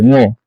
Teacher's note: আপনি যখন উ উচ্চারণ করেন তখন আমাদের এই ঠোঁটগুলো বাঁকা হয়ে যায়, ঠোঁটগুলো গোলাকার হয়ে যায়